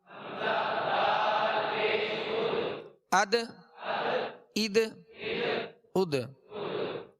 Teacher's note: دال بھی حروف ماشاءاللہ حروف قلقلہ میں سے ہے اور اس میں قلقلہ کرنا ہے یعنی آواز لوٹتی ہوئی ہے، آواز میں جنبش ہو